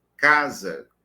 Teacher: esse S medial entre vogais tem som de Z, certo? Desta fricativa.